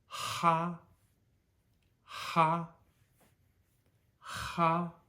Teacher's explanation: it's just more forceful probably 30 to 50% stronger than an English H so ha okay z z is not a smooth Z what